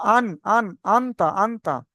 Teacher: আওয়াজকে নাকে তুলে নাকের বাসায় তুলে গুনগুন করে আওয়াজ লুকিয়ে আওয়াজটাকে নাকে তুলে পড়তে হয় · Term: গুন্না